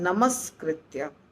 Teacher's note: करके लिखा गया है और जब इसका संधि होता है तो नमः का विसर्ग हट जाता है और कृत्य जुड़ जाता है उसके साथ और हो जाता है नमस्कृत्य स जुड़ जाता है आधा स